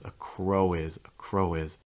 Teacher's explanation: so that W sound on crow is going to link with the I on is. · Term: linking